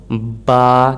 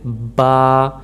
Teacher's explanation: यानी कि होंठों को मिलाकर पढ़ा जाता है, ऊपर और नीचे वाले होंठों को